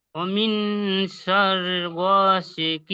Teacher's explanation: ওয়ামিন শাররি তাড়াতাড়ি পড়তে হবে, গইনটা টান দিতে হবে।